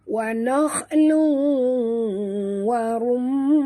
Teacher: Kita kena masukkan seluruh bunyi tanwin ini ke dalam waw, disertai dengung dua harakat, idgham ma'al gunnah ya.